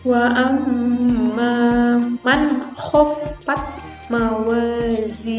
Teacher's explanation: nun matinya atau tanwinnya itu dibacanya jelas, bukan dengung ya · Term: Izhar